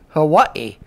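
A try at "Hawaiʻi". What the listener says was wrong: Actually, it's Kauai, Hawaii, because the W is pronounced like a V.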